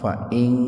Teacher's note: Nun mati ketemu dengan ta secara terpisah, jadi betul-betul dibaca samar gitu.